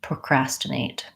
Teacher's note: we use a clear t on this one it's not a flap T